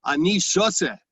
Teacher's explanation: shoteh with a tav in Ashkenazic pronounced as a s